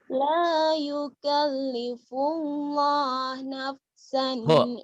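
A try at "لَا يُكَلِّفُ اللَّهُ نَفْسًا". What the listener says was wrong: hu-nya ketinggalan non. Hu-nya ketinggalan. La yukallifullahu.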